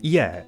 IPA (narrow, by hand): i͡ɛ